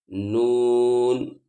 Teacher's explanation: नून को अदा करते वक्त इस बात का ख्याल रखें कि इसकी आवाज नाक में नहीं जानी